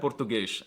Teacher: pronouncing s's at the end of words as an sh sound